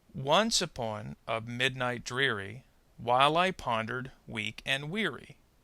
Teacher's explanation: total number of syllables which in this case is 16 and they come in eight pairs of syllables with the first syllable stressed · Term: octometer